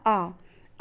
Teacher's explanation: वो जीवा के मध्य भाग से होता है, यानी कि जब हम आ का उच्चारण करते हैं तो जीवा का मध्य भाग कार्य करता है, इसलिए उसको मध्य स्वर कहा जाता है।